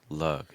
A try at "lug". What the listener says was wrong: lug, lug, lug, lug, lug, lug.